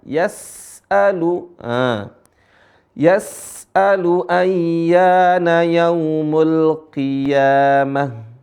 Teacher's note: perhatikan huruf Sin di sini enggak Qalqalah Bukan yas'alu tapi alirin suaranya